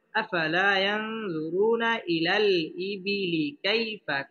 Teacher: পেশের বাম পাশে জাজম ওয়ালা ওয়াও মদের হরফ এক আলিফ টেনে পড়তে হবে এবং রটা মোটা করে পড়তে হবে